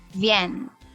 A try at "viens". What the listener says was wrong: Yes, but you stress out the last part. You say like vienne. It's vient. No stress on the N. You can drop that last N. It's almost je viens. Viens. Viens. And when you say viens, the E, you kind of open your mouth a bit like you smile. Je viens.